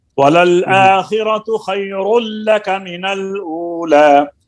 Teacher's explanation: یہ تنوین کا ادغام اور لام میں بلا گنہ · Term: ادغام تام